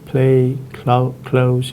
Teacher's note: The aspirated L occurs when preceded by an aspirated voiceless plosive